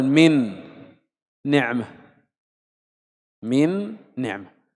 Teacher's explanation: يعني الآن لو جئنا ننطق مثلا من نعمة، من نعمة، الحرف الأول نون فيه غنة، والحرف الثاني أيضا نون فيه غنة، كلا الحرفين فيه غنة